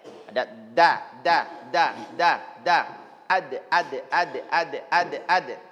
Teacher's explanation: sifat salah satunya adalah huruf kalkala. Jadi ada pantulan ya.